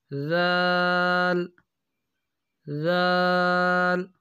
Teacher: ذال کے جو آواز ہے یہ باریک ہوتی ہے اور نرم ہوتی ہے